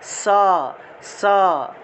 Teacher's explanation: দন্ত শব্দের অর্থ হলো দাঁত, দন্ত শব্দের অর্থ দাঁত, অর্থাৎ এই শব্দটা উচ্চারণের ক্ষেত্রে আমার দাঁতের মধ্যে এসে বাতাস ধাক্কা লাগবে, অর্থাৎ দাঁতের ব্যবহার, দাঁতের সাহায্যে এই দন্তস্বটাকে উচ্চারণ করতে হবে।